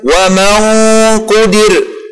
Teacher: اللسان سيكون قريبا من مخرج حرف القاف وأقصى اللسان